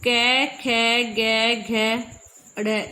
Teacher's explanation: कंठ से आवाज आ रही है तो ये कंठव्य है।